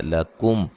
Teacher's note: لکم یہاں میم ساکن کا اظہار ہے، غنہ نہیں کریں گے